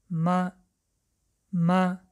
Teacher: برای یافتن مخرج حرف میم پیش از حرف میم الف مانده می خوانیم. ببینید وقتی که لبهای ما با هم رسیدند و هوا با خالیگی بینی برآمد، یعنی مخرج حرف میم این رسیدن لبها و هوا با خالیگی بینی می براید.